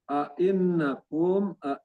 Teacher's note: naknya ini bertasjid itu gunnah musaddadah ditahan sedikitnya 2 harokat